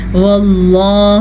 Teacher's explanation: لفظ اللہ کو پر پڑھیں گے، لفظ اللہ سے پیچھے والے حرف کے اوپر زبر کی وجہ سے